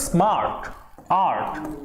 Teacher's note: आ पे आपका स्ट्रेस हो रहा है, खिंचाव